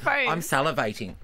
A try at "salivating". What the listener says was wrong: And the way you're saying salivating is weird. I'm salivating. You're using every syllable.